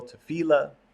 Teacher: Some people pronounce it with the accent on the last syllable, tefillah. Some people pronounce it with the accent on the middle syllable, tefillah. It sort of becomes anglicized in that way.